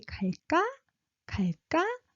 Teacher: 갈까, 갈까, low pitched, and 까, high pitched. When you're asking, you're supposed to raise your pitch.